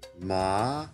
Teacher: a tone that rises up to high